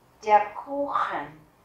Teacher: âm U chúng ta đọc dài, và các bạn để ý thấy âm CH ở đây, mình đọc là âm kh. CH sau A, U, U, A, U, tức là âm au, thì chúng ta sẽ đọc là kh.